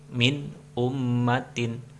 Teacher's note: harus dibaca jelas dan juga terang, nggak boleh didengungkan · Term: izhar